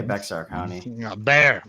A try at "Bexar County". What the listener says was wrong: Bear County. It was the X. It's Spanish.